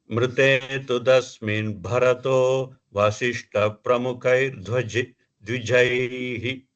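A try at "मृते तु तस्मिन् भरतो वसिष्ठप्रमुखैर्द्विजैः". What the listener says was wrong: த்விஜைஹி, நாட் மகாபிராணம், த்விஜைஹி. Now you said dhwaja. Dhwaja means kodi, kodi in artham. Tvi, it vi jaihi. It vi jaihi, tvajaihi, tvi jaihi, tvijaihi. Tvijaihi.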